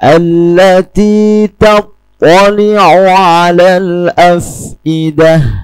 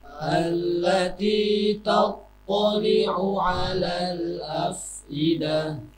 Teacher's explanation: Tha memang tidak mempunyai atribut hams, tetapi mempunyai atribut itbaq . Jadi Tha seharusnya tidak mengeluarkan desisan.